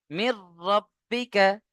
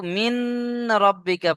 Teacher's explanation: নুন সাকিনকে র এর সাথে মিলিয়ে বিনা গুণনায় জাহির করে পড়তে হবে।